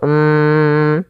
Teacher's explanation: cara membacanya mimnya ditahan dulu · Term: ghunah